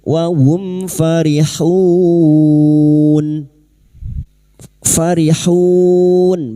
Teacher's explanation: Mim sukun bertemu fa idhar syafawi. Mim sukun dibaca jelas tanpa mendengung